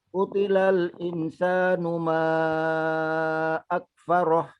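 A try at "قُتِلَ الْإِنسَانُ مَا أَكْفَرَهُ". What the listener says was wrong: Insan ikhfanya kurang. Utilal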